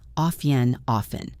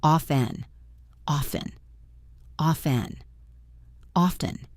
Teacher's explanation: The version with the T, often, is not technically wrong, and you will hear some speakers use it. But the silent T version is more natural and more common in educated speech in most regions